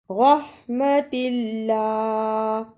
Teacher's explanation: را کو پر پڑھنا اور اللہ کو نرم زبان سے ادا کرنا